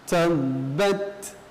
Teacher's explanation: Maka cara membacanya adalah yang lebih dahulukan adalah sifat syiddahnya, kemudian hamas. · di sini ada huruf ba yang bertasdid, maka sifat hurufnya adalah syiddah, ya, ditekan. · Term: syiddah dulu baru hamas